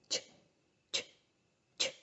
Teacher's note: we have the affricate sounds, and those are the palatal affricates. The voiceless one is ch, ch, ch, which is the sound in words like change and watching and catch.